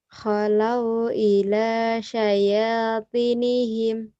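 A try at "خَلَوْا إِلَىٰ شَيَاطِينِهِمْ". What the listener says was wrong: I-nya panjang, mata I.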